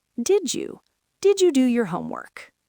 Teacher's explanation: They merge to create a J sound, like the J in jump.